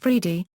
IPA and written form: ˈfɾɛd(ʒ)i (Fred)